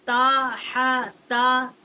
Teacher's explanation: تا کا مخرج جو ہے جب ثنایا علیا کی جڑ سے زبان کا کنارہ جو ہے وہ ٹکر کھاتا ہے تو اسے تا، تا کا جو مخرج ہے وہ وہاں سے ادا ہوتا ہے تا ہا تا۔